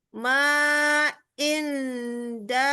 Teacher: maka hukum bacaan dan cara membacanya adalah dengan disamarkan ya atau didengungkan